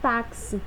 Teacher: Porque esse meu som de X, ele tem som de KS, o kiss, kiss.